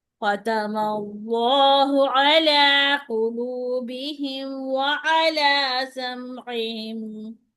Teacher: अला अला लाम मोटा नहीं होगा